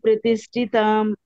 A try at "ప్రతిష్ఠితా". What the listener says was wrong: ప్రతిష్ఠితాం అంటున్నారు మీరు తాం లేదు తా